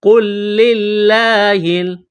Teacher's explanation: لفظ اللہ کے نام سے پہلے زیر ہے، لفظ اللہ کے نام کو باریک کرنا ہے · یہاں لام ساکن ہے، اس کے بعد لام کے اوپر تشدید ہے تو لام کو لام کے ساتھ ملائیں گے ، پلس کریں گے۔ قُلْ لِلَّهِ، لفظ اللہ کے نام سے